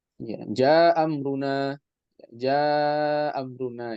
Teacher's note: Antum lihat di situ ketika sama-sama fathah ada yang dia diisqot ya ada yang asqatal hamzatul ula artinya dibuang hamzah yang pertama